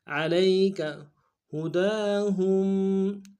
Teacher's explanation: علیک ہداہم، ہا کو نون سے ادا کریں گے، دال کے اوپر کھڑا زبر ہے، ایک دال میں کھینچیں گے، ہا کو میم ساکن کے ساتھ ملانا ہے، میم ساکن میں غنہ کریں گے